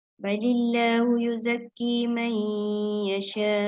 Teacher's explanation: Kerana di situ bezanya antara khalaf dengan khalat ialah idgham bila gunnah ma'al gunnah. Nun mati bertemu ya. Jadi baca pada balillah je dengan buat ma'al gunnah.